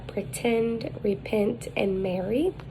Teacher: The height, it is low, mid. The advancement is front, the lips are unrounded, and it is lax. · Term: epsilon